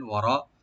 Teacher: ওয়ারাবিতু, ওয়া ওপেন রাখবেন, রটাকে মোটা করে ডিপ করে এক আলিফ টানবেন